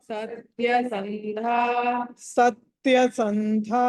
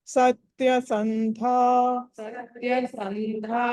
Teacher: సత్య సంధా అన్నది మహాప్రాణం ఒత్తి పలకాలి